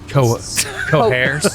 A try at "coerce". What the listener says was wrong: Both are accepted. It's not the H. You don't add an H.